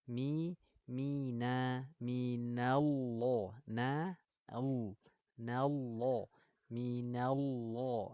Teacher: huruf nun ini adalah huruf tipis bukan huruf istila maka huruf nunnya harus kita tipiskan bunyinya sempurna gak boleh tebal gak boleh ikut-ikutan tebal jangan minall